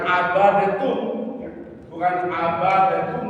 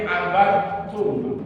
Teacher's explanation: Sifat kolkolanya hilang total, masuklah pada sifat huruf yang kedua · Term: idgham